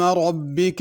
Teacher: ربک میں را کو پر پڑھنا ہے، ربی کا نہیں پڑھنا۔